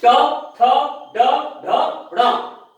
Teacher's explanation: इसके बाद ट, ठ, इसमें जीभ और पीछे चली जाती है। तालु का जो बिल्कुल ऊपर का कठोर भाग है उससे स्पर्श करती है जीभ